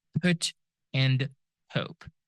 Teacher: P is one of those sounds that are aspirated, meaning they can be followed by like a a subtle H sound after them